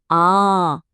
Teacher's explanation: आ बोलने के लिए मुंह थोड़ा ज्यादा खुलता है और आवाज थोड़ी देर तक टिकती है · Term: दीर्घ स्वर